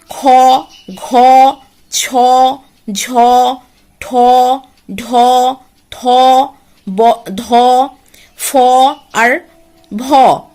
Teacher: প্রতি বর্গের দ্বিতীয় ও চতুর্থ বর্ণের উচ্চারণের সময় নিঃশ্বাস জোরে বের হয়। ঠিক আছে, সেই কারণে এই বর্ণগুলিকে বলা হয় মহাপ্রাণ বর্ণ।